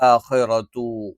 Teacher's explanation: ആ എന്നുള്ള ഉച്ചാരണം തൊണ്ടയുടെ താഴ്ഭാഗത്തുനിന്നാണ്